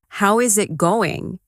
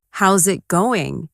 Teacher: Instead, how is it going becomes how's it going. The is disappears and the final G in going often softens. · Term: connected speech